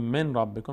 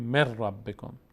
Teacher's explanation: به جای اینکه نون ساکن تلفظ کنیم همون حرف بعدی رو ساکن تلفظ میکنیم، یعنی حرف بعدی میشه 2 تا، تشدید میگیره. اینو ما بهش میگیم قاعده ادغام، یعنی دغم شدن یعنی داخل شدن یک حرف در حرف دیگر.